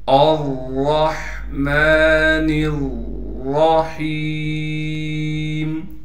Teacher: یہاں بھی را کو موٹا کر کے پڑھیں گے اور را نون سے مل کر پڑھا جائے گا، یعنی نون کو را سے ملائیں گے، را کو موٹا کر کے بھی پڑھنا ہے، ہا کو ایک الف کی مقدار کھینچیں گے کیونکہ ہا کے بعد یا مدہ ہے۔